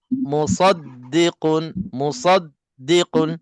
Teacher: tengok saya baca daripada awal wamum [Musik] kitabumah musdi musaddiqun musaddiqun sad bunyinya tebal dan tak perlu kepada muncung